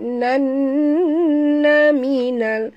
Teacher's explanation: di sini nun ada tasydid, wajib dengung, wajib al-gunah, dengung, duharakat